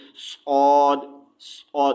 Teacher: आवाज़ मोटी होती है, ठीक है, और इसमें सीटी वाली आवाज़ होती है, हल्की सी सीटी की आवाज़ भी आती है